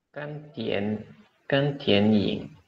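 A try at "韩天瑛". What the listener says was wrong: Bagus.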